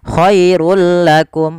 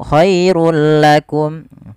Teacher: Awalnya khairun, ketika bertemu lam langsung dimasukkan ke huruf lam tanpa ada penahanan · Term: idgham bila gunnah